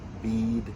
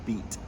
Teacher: lengthening of vowels before consonants that are voiced, like d and b and g. But before unvoiced vowels, like t, bead, beat, we shorten the vowel. · But before unvoiced vowels, like t, bead, beat, we shorten the vowel. So the vowel gets lengthened before the D and shortened before the T